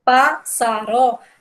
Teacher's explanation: Aí, quando separa pássaro, percebam que há uma sílaba mais forte. Quando eu digo pássaro, o pá é o mais forte.